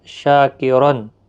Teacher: شاکرن، شا الف مدہ ہے، ایک الف کی مقدار کے برابر کھینچیں گے، اور دو زبر کی وجہ سے را پر پڑا جائے گا۔ شاکرن، تنوین کے بعد حمزہ عین آیا ہے تو گویا کہ یہاں پر اظہار ہلکی ہوگا، گنہ نہیں کریں گے